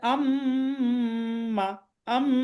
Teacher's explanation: তার মানে বোঝা যাচ্ছে এটা মুখ দিয়ে উচ্চারণটা হচ্ছে না, নাক দিয়ে উচ্চারণ হচ্ছে। গুন্নাটা এরকম, মুখ দিয়ে উচ্চারণ না হয়ে নাক দিয়ে উচ্চারণ হয়, এটাকে গুন্না বলা হয়।